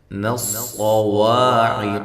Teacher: صاد کو موٹا کریں، واو کو ہونٹوں کو گول کرتے ہوئے، اور الف مدہ ہے، قاف کو موٹا کریں، عین واضح نکالیں۔